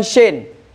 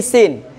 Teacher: Sya lebih besar anginnya daripada sinnya. Kalau sin sedikit tipis, kalau shin sedikit tebalnya.